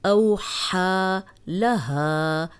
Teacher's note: ہا کو 2 حرکات اس لیے لمبا کر رہے ہیں کہ اس پہ کھڑی زبر ہے